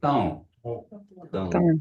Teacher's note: Thong, and it's nasalized. The O is nasalized, so you say thong.